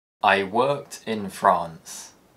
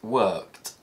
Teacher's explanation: when the ed suffix follows an unvoiced consonant it produces the t sound